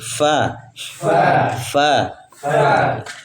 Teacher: bibir bawah bertemu di gigi